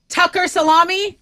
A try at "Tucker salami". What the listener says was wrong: You were pronunciating too hard on that one.